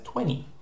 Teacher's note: we pronounce the number that comes after 19 as 20, where we drop the T altogether